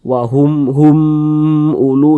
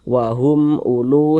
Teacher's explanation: Baca jelas, tak berdengung dia. Jadi humnya itu kita baca pendek. Wahum ulu, jangan dibaca wahum ulu, wahum hum ulu, jangan. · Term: izhar syafawi